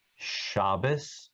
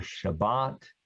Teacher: And that's why you hear the word Shabbos or Shabbat, because Ashkenazim pronounce this letter without a dot as an S sound. Sephardim and Mizrahi, Eastern Jews, pronounce both forms as a T.